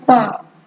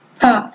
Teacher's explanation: पा से अधिक वायु हमारी फा में निकल रही है। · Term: महाप्राण